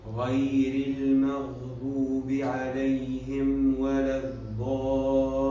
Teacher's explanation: مد لازم يمد بست حركات